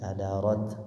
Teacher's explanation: Cuma di kita riwayat Hafs baca kuwi ro-nya tebal, kada ro tebal ya. Di ayat ketiga wa idzal jibal ya, lamnya tidak boleh mantul, ba dua harokat, suyirat sama ianya bertasydid, disempurnakan, ditekan dulu.